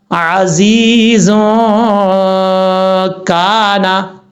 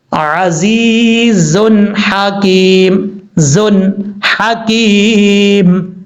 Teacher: یہاں پر ہا ہے حروف حلقی میں سے، تو یہاں پر نون کو ظاہر کریں گے. عزیز حکیم، زن حکیم، ہا کو اپنے مخرج سے ادا کرنا ہے.